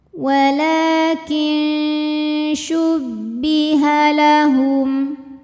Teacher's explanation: Karena ada nun sukun menghadapi huruf shin. Cara bacanya nunnya dibunyikan samar-samar, siap-siap menuju makhraj huruf shin disertai bunyi dengung. Dengung dan samarnya seimbang. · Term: ikhfa awsat